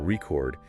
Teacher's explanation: if you stress the second syllable record, it becomes a verb, like recording a video.